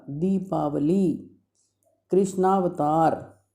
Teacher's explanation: दोनों ह्रस्व अ मिलकर के दीर्घ आ बन गए